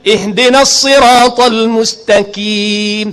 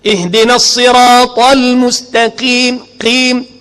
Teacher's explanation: Pasal nak jaga qaf tu huruf isti'la, jadi mustaqim ataupun mustaqim. Kaf dengan qaf ni makhraj dia cukup dekat. Dia cuma beza dia lari satu jari.